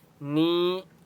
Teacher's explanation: یا مدہ ہے، نون کو 1 الف کی مقدار کھینچ کر پڑھیں گے